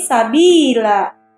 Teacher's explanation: Fathah tanwin pada akhir kata jika diwaqaf atau berhenti dibaca mad, sehingga harokat tanwin tidak lagi dibunyikan. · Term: mad iwad